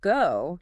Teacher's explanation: For the long O in go, your lips are probably more rounded.